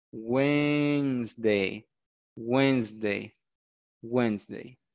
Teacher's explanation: Okay, in Spanish, es el miércoles, la D no se pronuncia, no se pronuncia ni la D, ni la E que está después de la N. Eso no se va a pronunciar.